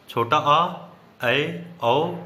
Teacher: अर्धविवृत स्वर छोटा आ, ऐ, औ, जिसमें आधा मुख खुलता है।